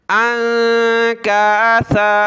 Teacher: سا پر زبان نکالیں، اس کو آپ نے انکاسا سین نہیں پڑھنا